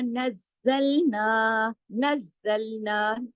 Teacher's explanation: नज़्ज़लना सख्ती से पढ़ा जाएगा तशदीद की वजह से